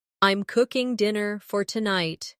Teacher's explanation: The stress is on cooking and tonight.